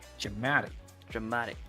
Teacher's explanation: you push the second syllable, not the first syllable.